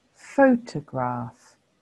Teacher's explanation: That shows you that the first syllable is the stressed syllable